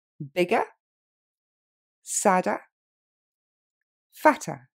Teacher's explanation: ce ER à la fin, c'est un son E et il est très court. Je dis pas bigger, sadder, fatter, mais bigger, sadder, fatter. · Je dis pas bigger, sadder, fatter, mais bigger, sadder, fatter. Donc l'accent tonique tombe sur la première et ce ER, c'est le son E. On l'entend quasi pas.